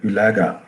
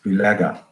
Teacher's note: So the u ways, if you look at this, it has, the first half you look at u, the first half of u, it is almost like u, the back vowel. But on the second half of it, it is almost like the e. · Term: diphthongal quality